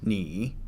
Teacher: the third Tone It descends then sharply goes upward